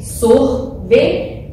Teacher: A penúltima sílaba está mais forte, então ela é paroxítona.